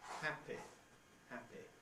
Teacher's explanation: this had a short vowel equated with the I of ship